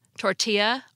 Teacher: We pronounced the two L's in tortilla like a y as they are in Spanish